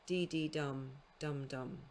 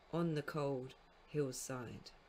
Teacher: is comprised of an anapest and then a spondee. So it's unstressed, unstressed, stressed, stress, stressed, or dee dee dum, dum dum, on the cold hill's side.